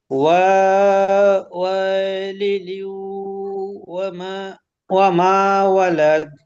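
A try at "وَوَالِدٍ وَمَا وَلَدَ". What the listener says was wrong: হ্যাঁ, প্রথম ওয়াওটা টান হবে না, আর দ্বিতীয় ওয়াওটা টান হবে। ওয়াওয়া, ওয়াওয়ালিদিন ওয়ামা ওয়ালাদ।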